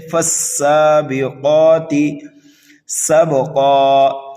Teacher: قاف حروف مستعلیہ میں سے ہے، اس کو موٹا کر کے پڑھیں گے